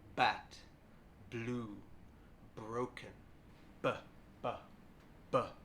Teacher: The B sound is voiced, so that means we can do our trick again. We can touch our throat gently, like this, and this time you'll feel a soft vibration from your vocal cords.